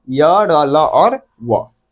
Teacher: मुंह के किसी एक भाग को परिपूर्ण रूप से स्पर्श तो करता है लेकिन परिपूर्ण रूप से एकदम स्पष्टता के साथ स्पर्श नहीं करता है। इसलिए इसका नाम अंथ व्यंजन पड़ा है। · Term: अंतस्थ व्यंजन वर्ण